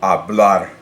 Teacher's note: its natural stress is already on that last syllable, so I don't need an accent there